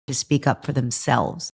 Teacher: The function words to and for are reduced to t and fur. · the content words are the parts of the phrasal verb speak up and the word themselves, and they're all stressed